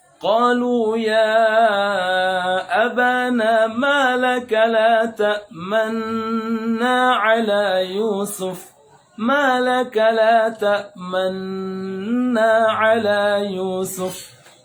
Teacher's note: Ishmam itu indimam syafatain, memonyongkan kedua bibir, ya, monyong sedikit, ya, sesaat di tengah-tengah gunnah pada ma laka la ta'manna.